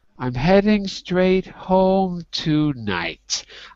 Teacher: difference that i hear is i'm heading straight home tonight that i really drop my voice on tonight · I really drop my voice on tonight because it's the end of the sentence. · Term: voice drop